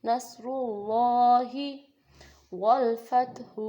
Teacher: نصر اللہ، اللہ سے پہلے کیا ہے، پیش، تو یہاں پر اللہ حرف کو کیا کرنا ہے، موٹا ادا کر کے پڑھنا ہے